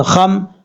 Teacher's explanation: خا حروف مستعلیہ میں سے ہے، پر پڑھا جائے گا، یعنی موٹا پڑھا جائے گا۔ اور اچھا، کچھ لوگ پڑھنا ہے خمرے، خمرے نہیں پڑھنا، میم میں قلقلہ نہیں کرنا، یہ غلط بات ہے، میم میں قلقلہ نہیں ہوتا۔